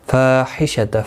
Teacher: فا الف مدہ ہے، ایک الف کی مقدار کے برابر کھینچ کر پڑھیں گے